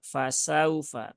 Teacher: waw sukun yang didahului harokat fathah. Maka bacanya dia dilembutkan karena lin itu sifatnya lembut